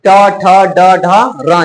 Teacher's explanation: अभी बताए हैं त, थ, द, ध ट, ठ, ड, ढ, र जो है इन पूरे उच्चारण नहीं पांच में हम क्या करते हैं? जीभ को ऊपर की ओर घुमा लेते हैं। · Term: मूर्धा